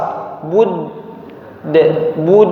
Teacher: Udah qalqalahnya, pantulannya itu natural ya, alami. Karena ujung lidah nempel ke pangkal gigi seri atas, gigi depan kemudian lepas.